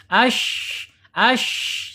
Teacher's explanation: shin dia secara makhraj ada di alisan ya, alisan yaitu di punggung lidah ya, punggung lidah terangkat. Kemudian secara sifat ada di al-hamas, kemudian secara yang tidak berlawan ada tapasyi.